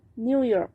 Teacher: the second syllable is stress while the new is unstressed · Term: second syllable is stressed